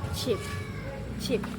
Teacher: bunyi voiceless di mana tidak ada getaran suara yang terdengar